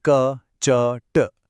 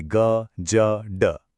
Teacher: अघोष मतलब बिना कंपन वाली ध्वनियां। जैसे क, च, ट। और दूसरा है घोष मतलब कंपन वाली ध्वनियां। जैसे ग, ज, ड।